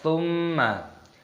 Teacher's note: Ada mim tasdid, hukumnya dibaca gunnah, maka didengungkan